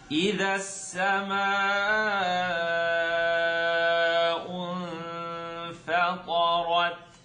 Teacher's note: We have a basic stretch here, and we have a noon sukoon followed by the letter fa. So it's going to be ikhfa, tongue not touch, but it's going to be light.